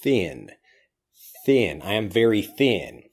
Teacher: you try to over pronounce it it becomes easier to say all you have to do is stick out your tongue and then bite your tongue and then just pass air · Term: th sound